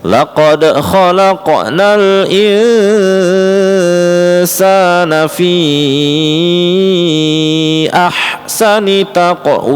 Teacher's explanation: fi ahsani itu adalah mad jaiz munfasil ya. fi 4 harokat.